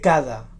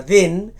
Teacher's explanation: el so aproximant és bastant més suau que l'oclusiu